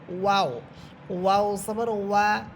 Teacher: ওয়াও ঠোঁট গোল করে পড়বেন